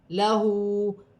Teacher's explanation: ہا پر الٹی پیش ہے، ایک الف کی مقدار کھینچ کر پڑھا جائے گا